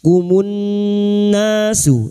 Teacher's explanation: nun yang bertasdid ini kita dengungkan selama tiga harakat